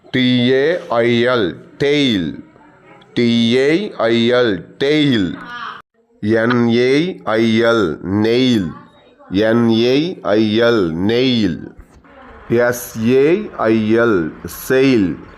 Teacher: To make this sound, we start with the A sound and glide into the sound E. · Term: diphthong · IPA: /eɪ/